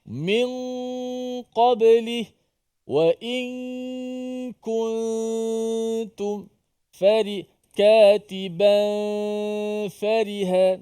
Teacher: nun tu tak dijelaskan makhrajnya, tidak dilekatkan hujung lidah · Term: ikhfa